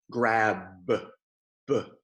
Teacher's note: that B is voiced it makes my throat vibrate